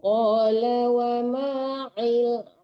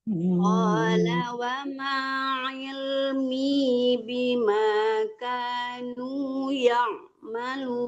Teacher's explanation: Qala wa ma il, jangan il ya. Jadi jangan disamarkan huruf ain. Ilmi harus di tengah-tengah tenggorokan pas betulnya makhraj hurufnya.